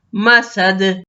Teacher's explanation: ہم نے وقف کیا، دال ساکن پہ قلقلہ۔ مسد، فی جیدہا حبل من مسد۔